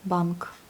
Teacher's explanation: Ça s'écrit et tout se prononce. Et puis, on a notre consonne un peu sourde à la fin